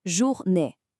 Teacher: that J sound is soft. It's not like the J in judge. It's more like the S in treasure or measure.